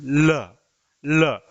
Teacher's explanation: पार्श्विक वर्ण का मतलब हुआ जीवा दोनों तरफ से साइडों से हिल रही है